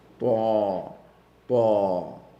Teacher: there's no whispering sound with it